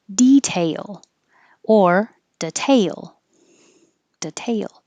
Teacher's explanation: I put tail to represent you go tay very high and you'll come down